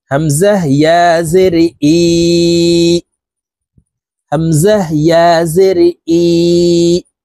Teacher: এখানে এক আলিফ মদ, আমরা এক আলিফ টেনে পড়ব।